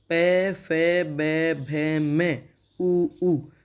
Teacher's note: इनका उच्चारण करते समय हमारे होठों का आकार बदल रहा है, गोलाकार में हो रहा है या जिस भी आकार में हो रहा है, तो इसलिए इनका उच्चारण स्थान हुआ ओष्ठ, और इनको बोलेंगे ओष्ठ्य ध्वनियाँ।